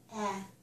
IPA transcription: æ